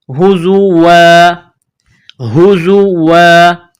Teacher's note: جب وقف کریں گے تو الف کو ظاہر کریں گے